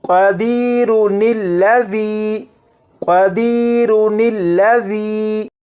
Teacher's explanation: لفظ ہے قدیرو، اس کے بعد یہ دوسرا لفظ ہے الذی، اگر ان دونوں الفاظ کو ملا کر پڑھنا ہو تو پھر را کے بعد نون زیر نی کو پڑھیں گے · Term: نون قطنی